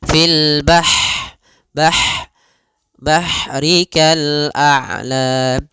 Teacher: Bah ha sifat ha di sini hati-hati jangan dibaca dengan ha besar jangan fil bahri tapi dia ha pedas lembut dan juga dia punya sifat hames mengalirnya nafas